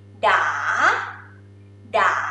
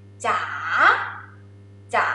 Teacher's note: Okay, rising tone, it sound like a song. Go up.